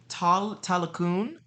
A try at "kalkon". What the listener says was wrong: uh, with a K. So Kal, no, Kall. So Kal, and then uh, Kalkun, uh, with a K.